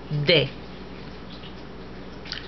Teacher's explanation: it's made by placing the tip of the tongue just behind the upper front teeth.